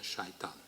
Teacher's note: Satan devient Satan avec palatalisation du S initial dû à la voyelle suivante devient Shaitan.